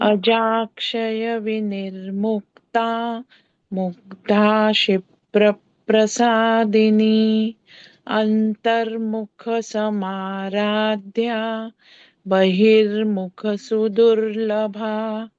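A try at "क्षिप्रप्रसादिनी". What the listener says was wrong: Kshipra, this is a ksha. Mugdha kshipra prasadini.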